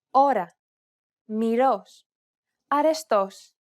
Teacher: The key here is to make sure that the tongue gets really close to the gum ridge and then retracts back very quickly.